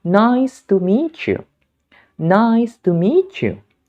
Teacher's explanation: ketika bunyi te bertemu dengan bunyi ya, maka dia akan melebur menjadi bunyi ce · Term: peleburan bunyi konsonan